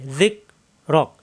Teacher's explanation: এই জিন নরম করে জিব্বার আগে দাঁতে লাগায় যিকরাক। রা হবে না, র মিলবে কাফের সাথে, এখানে সাকিন হয়ে যাবে, এই কাফে সাকিন হয়ে যাবে রক যিকরাক।